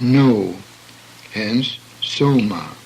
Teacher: the o is a semi diphthong pronounced as the word no